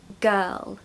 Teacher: you just put quite a bright L on the end of that and you'll have it perfectly